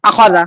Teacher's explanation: আচ্ছা হামজা জবর আ খ জবর খ লা জবর জাল জাল জবর জা তাহলে আখ আখ আখ লা টান কিন্তু হয়ে গেছে, হরকতের উচ্চারণ এই জবরদের পেশকে হরকত বলে, হরকতের উচ্চারণ তাড়াতাড়ি করতে হবে, আখাজা, কোনো টান হবে না